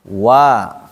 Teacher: satu yaitu wau. Jadi saat kita membaca huruf wau mulutnya dimonjong dulu sebelum fathah.